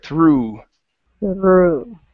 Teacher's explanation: keep the tongue down and pronounce the oo back here